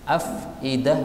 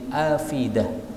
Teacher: ini hamzah yang kedua boleh dihilangkan menjadi alal afidah · bacaan naql, yaitu harokatnya dipindah pada huruf sebelumnya